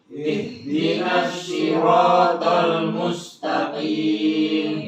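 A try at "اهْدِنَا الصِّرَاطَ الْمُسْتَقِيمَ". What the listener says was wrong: Ya, khusus di huruf shad di ayat ini dan ayat setelah ini. Huruf shad dikata as-sirata ini jangan pakai huruf shin. Makhrajnya bukan di shin ya. Huruf shad ini bukan makhrajnya huruf shin tapi makhrajnya huruf sin. Sama kayak S biasa saja. Cuman bedanya tebel suaranya.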